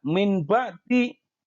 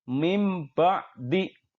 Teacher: Yang betul adalah nun matinya kita ganti dengan huruf mim. Sehingga kita baca mim ba'di. · Hukum bacaan iqlab dibaca dengan cara mengganti huruf nun mati atau tanwin dengan huruf mim.